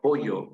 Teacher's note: nosotros decimos pollo con Y, que es el yeísmo